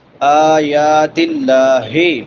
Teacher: آیات اللہ، بڑی ہا ہے اقصی حلق سے